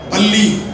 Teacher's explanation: நுனி நாக்கை கொண்டு போய் மேல் வரிசை பல்லுல உள்பக்கமா தொட்டினா ல வரும் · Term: லகரம்